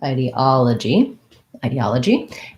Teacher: third syllable stress so we have the i diphthong